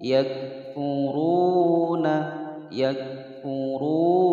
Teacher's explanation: ada wawu sukun sebelumnya dhamma, hukum bacaan matobi'i dibaca panjang dua harokat